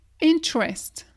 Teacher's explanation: Le E ici, c'est à peine si on l'entend.